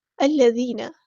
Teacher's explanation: یہاں پر ذال باریک نرمی سے ادا کریں گے، یا مد آیا تو مد اصلی ہوگی.